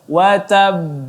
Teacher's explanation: qalqalah kubranya sedikit ditekan lagi, watab, ditahan dulu, kemudian baru dipantulkan